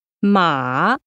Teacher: This is a scooping tone, from low pitch to medium. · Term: third tone